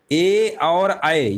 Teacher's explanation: देखिए ए और अय ये आपके कंठ तालब होते हैं